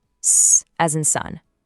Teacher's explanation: S is a continuous hiss, S, as in sun.